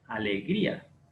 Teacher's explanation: abierta a toda la alegría alegría lleva el acento diacrítico porque la fuerza de voz está recayendo en la vocal cerrada